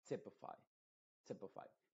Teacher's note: la primera Y se está pronunciando con la I modificada y la última Y se está pronunciando como I, que es la I original